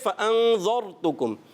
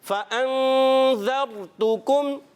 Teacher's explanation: بعض مرتبہ ایسا دکھا گیا ہے کہ اس را کو موٹا کرنے کے اس میں ذال موٹا ہو جائے، جیسے فَأَنذَرْتُكُمْ، تو ہم نے ذال باریک رکھنا ہے